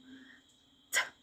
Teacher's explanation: Use the tip of your tongue and the tooth ridge, that hard place behind your upper teeth.